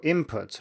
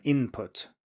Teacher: it's spelled i-n-p-u-t but it's often pronounced as i-m-p-u-t